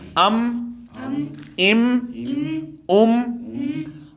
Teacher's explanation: میم ہونٹوں کے ساتھ ادا کیا جاتا ہے نا، دونوں ہونٹوں کو ملانے سے ، تو واضح طور پہ یہاں پہ آواز ہونٹ دونوں مل